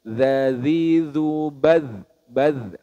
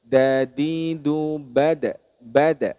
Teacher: kalau Dal pangkal gigi seri atas sedangkan dari sisi sifatul hurufnya dalal ini teman-teman memiliki sifat rakhawah atau suaranya mengalir sedangkan Dal yang tidak ada titiknya itu dia memiliki sifat syiddah atau tertahannya nafas